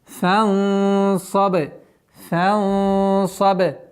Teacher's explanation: И ба у нас мягкий звук, но с правилом калкаля.